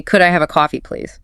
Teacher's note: That little lift on please, makes it sound warm, open. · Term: slightly rising tone